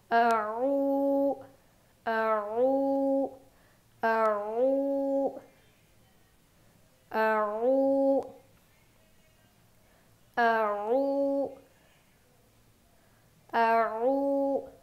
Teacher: हलक को थोड़ा सा अंदर की ओर पे दबाना है, तो हलक के बीच के हिस्से से आइन की आवाज़ आती है।